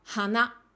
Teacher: Donc on a à chaque fois hana, donc ça monte, hana. · pour la fleur et le nez, tous les deux ont le même pitch accent sur le mot en lui-même. Donc on a à chaque fois hana, donc ça monte